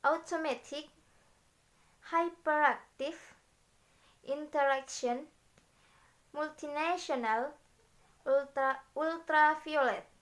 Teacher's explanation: there is usually secondary stress on the first syllable, no stress on the second, and primary stress on the third